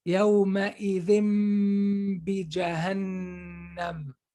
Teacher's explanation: the meme and ba are from the same exit, right? The meme and ba are both from the lips. So when I'm flipping the noon to meme, I'm getting ready for the next letter, which is ba. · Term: ghunna